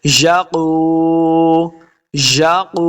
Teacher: قاف حروف مستعلیہ سے اس کو موٹا پڑھیں گے